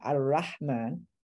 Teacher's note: So Ra is also one of these letters that if it's followed by a or a U, it becomes velarized. So instead of saying Ar-Rahman, you say Ar-Rahman, and it becomes ah.